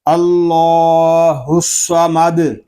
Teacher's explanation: اس کو اللہ الصمد نہیں پڑھیں گے، دال ساکن کریں گے تو اس میں پھر قلقلہ خوب ظاہر ہوگا